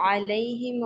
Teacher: आइन की आवाज हलक के दरमियान से आएगी